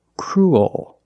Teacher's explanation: it goes a little high in the back oh oh and the bottom of the tongue expands it gets bigger to make the dark l